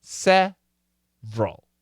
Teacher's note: But almost always we delete the middle syllable and we say several. 2 syllables. Perfect is 3, but almost always we say 2.